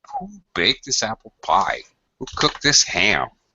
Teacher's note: These are information questions. They demand final falling intonation.